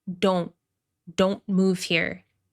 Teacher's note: Stopped T at the end of this contraction